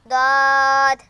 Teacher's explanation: জিহ্বার গোড়ার কিনারা উপরের মাড়ির দাঁতের গোড়ার সঙ্গে লাগাইয়া